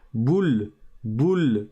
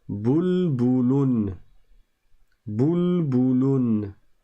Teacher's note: Bou, suivi d'un lem avec son soukoun. Donc ça fait la consonne L en fait, sans voyelle après. Boule, boule, je m'arrête sur le soukoun.